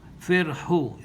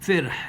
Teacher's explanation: If you're going to pause, so you drop the dhamma. Firhu. See, you drop the dhamma.